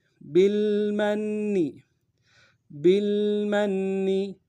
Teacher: میم کو نون ساکن کے ساتھ ملانا ہے، نون کے اوپر تشدید ہے، زور دیں گے۔